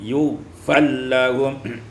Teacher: diidghamkan ra pada lam menjadi yughfal lahum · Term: idghamur ra fil lam